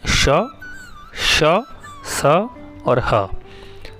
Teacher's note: यानी उच्चारण के समय मुख से गर्म हवा निकलती है। ऊष्म व्यंजनों का उच्चारण एक प्रकार की रगड़ या घर्षण से उत्पन्न ऊष्म वायु से होता है।